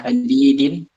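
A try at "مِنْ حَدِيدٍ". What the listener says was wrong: Min ha, dia baca ha hadi. Kalau dikasrohkan ini meringis. Hadidin. Nah, min hadidin.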